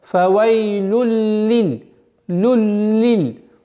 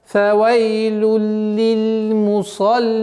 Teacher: То есть танвин уходит полностью в лям. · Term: идгам биля гунна